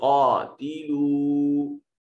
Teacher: कौफ को इसका हलक से अदा करेंगे, मोटा और पुर करके पढ़ेंगे, उरूफ मुस्तालिया में से है।